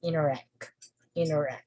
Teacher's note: So you'll notice that we have a primary stress on the second component or the second word, which is act, interact, interact.